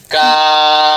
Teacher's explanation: জিহ্বার গোড়া থেকে একটু আগে বাড়াইয়া তার বরাবর উপরের তালুর সঙ্গে লাগাইয়া মধ্যখান পেঁচানো কাফ।